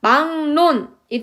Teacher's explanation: 받침 기역 비읍 뒤에 연결되는 리을도 니은으로 발음합니다. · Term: 비음화